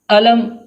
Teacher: علم کے شروع میں جو حمزہ آیا ہے اس کو بالکل واضح طور پر اور سختی سے ادا کریں گے۔ بالکل آواز شروع حلق سے آئے گی، یعنی علم پڑھیں گے اس کو۔